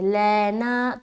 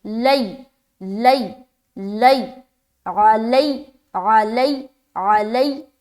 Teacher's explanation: लैना जो पढ़े ना मजहूल हो जाएगी आवाज़। अलैना, लई, लाम या ज़बर लई, लाम या ज़बर लै, ऐसा नहीं बोलना।